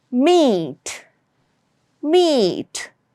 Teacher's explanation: It's meat meat. And notice how the air is coming out or through your nasal passage or how it is getting channeled through your nasal and how it has a nasal tone.